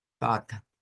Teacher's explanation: Eso también se convierte en una F y eso es casi como que les dijese, miren, vamos a decirlo con una F y vamos a decirlo no con una E, sino que es con un schwa